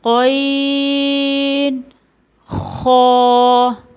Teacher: غین خا ادنیٰ حلق یعنی حلق کے شروع کے حصے سے ادا ہوتے ہیں، جو کہ منہ کی طرف ہوتا ہے